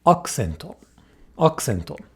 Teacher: it occurs between a K, K, K and an S, S, S. These are both unvoiced consonants. Thus, the U becomes devoiced.